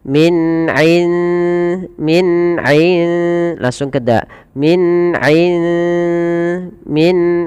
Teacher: Maka teman-teman apabila kita mendapati dalam bacaan kita ada huruf nun sukun bertemu dengan dal, maka cara membacanya samarkan nunnya kepada huruf dal dan dia dibunyikan seakan-akan terdengar ada eng ya tapi dia tidak eng tapi dia menyamarkan langsung kepada makhrajnya. Kalau di sini makhrajnya ke dal berarti ikhfanya tipis.